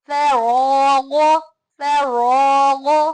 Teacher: را موٹا، فا باریک، غین موٹا، فراغ، فراغ.